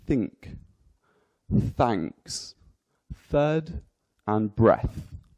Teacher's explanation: So we've got voiceless, so no vibrations in the vocal cords